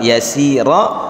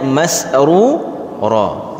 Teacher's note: diakhiri dengan ra, baris atas dibaca tebal yasira, begitu juga di ayat ke-9 ini dibacanya masrura.